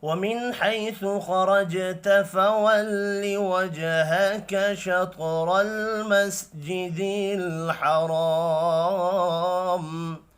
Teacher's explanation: خا اور را پر پڑھے جائیں گے، جیم ساکن پر قلقلہ کریں گے۔ یہ بھی جیم ساکن ہے، قلقلہ کرنا ہے۔ · نون ساکن کے بعد حا ہے، اظہار حلقی ہوگا، غنہ نہیں ہوگا